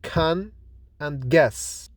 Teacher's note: K is unvoiced and fortis, that is produced without vibration in the vocal cords and produced with more force than g. It is fortis because it's produced as strong articulation or with force. · using back of the tongue against the soft palate then suddenly release the air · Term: plosives